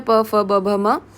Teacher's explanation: इन वर्णों का उच्चारण करते समय दोनों ओष्ठ आपस में मिलते हैं, ठीक है। मतलब कि लिप्स आपस में मिलेंगे इसमें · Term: ओष्ठ्य